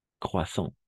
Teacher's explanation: Croissant. Porque la A-N va a ser para nosotros O-N, nasal